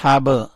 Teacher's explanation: با کے اوپر کلکلہ کیا، با کو اٹھایا